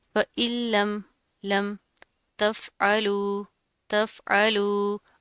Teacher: आइन की आवाज़ को वाज़े करना है, हमज़ा नहीं बनाना।